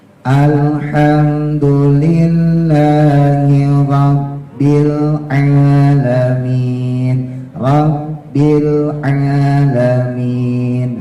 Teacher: ro-nya ujung lidah taruh di atas ya, di langit-langit yang keras ya, supaya getarannya tidak lebih dari 2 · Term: huruf ro hijaiyah